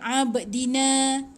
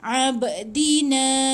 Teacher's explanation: Ada ba tu, ada pantulan qalqalah sikit.